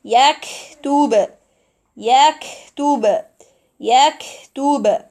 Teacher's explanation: The kaf sukoon here we have to produce lots of air because of the characteristics of kaf in this case.